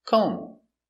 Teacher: The B is silent.